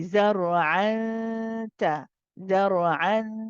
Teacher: The tip of the tongue does not go to the articulation point of noon. Instead, it gets close and ready to pronounce the ta, because ta is the next letter in this case. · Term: ikhfa haqiqi